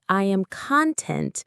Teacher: If you say I am content, stress on the second syllable, it means you are happy.